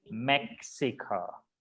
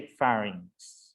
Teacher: Recuerden que la X es como si fuese una K antes de la S